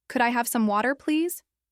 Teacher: with a gentle rise and fall. It sounds polite and considerate.